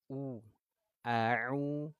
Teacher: di sini huruf mad ini makhrajnya keluarnya dari al jauf